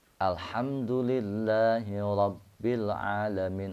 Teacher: rnya boleh ro irtiadu atau digetarkan ujung lidahnya atau dibaca ro biasa · Maka dibacanya adalah alhamdulillahi rabbil alamin. Ra-nya boleh ra irti'adu atau diketarkan ujung lidahnya, atau dibaca ra biasa. Tapi kita berusaha untuk membaca ra-nya ra fasihat ya.